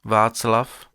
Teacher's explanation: deux affriquées, qui sont toutes les deux des sourdes sans équivalent sonore, l'alvéolaire ts de Václav, et la postalvéolaire tch de.